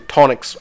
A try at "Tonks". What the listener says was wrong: There's no I or E in Tonks.